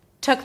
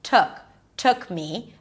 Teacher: We have a relaxed uh sound, not took.